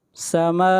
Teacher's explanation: میم کے اوپر مد متصل ہے، اس مد کو 3 الف کے برابر کھینچ کر پڑھا جاتا ہے